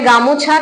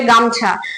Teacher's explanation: মধ্য স্বরলোপ, যেসব ধ্বনি পরিবর্তনে দেখতে পাবো শব্দের মাঝখান থেকে কোনো ধ্বনি লোপ পেয়ে গেছে, যেমন ধরে রাখো আমরা বলি না গামোছা, কেউ বলে গামোছা, কেউ বলে গামছা, তাহলে যখন গামোছা থেকে গামছা হয়ে যাচ্ছে তখন কিন্তু ময় ওকারটা যে আছে মাঝখানে ওকারটা কিন্তু উঠে যাচ্ছে